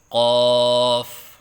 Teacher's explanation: مخرج زبان کی جڑ اور لحاظ اس سے قاف نکلتا ہے، یعنی زبان کی جڑ جو حلق سے متصل ہے اور اس کے مقابل اوپر کا تالو اس سے قاف ادا ہوتا ہے